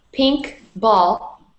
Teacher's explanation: in the phrase pink ball both words are equally stressed